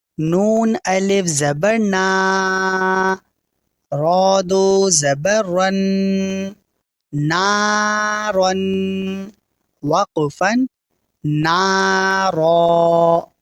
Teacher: اس والے حرف میں بھی نون پر دھیان دینا ہے کہ نون کی آواز ہماری ناک میں نہ جائے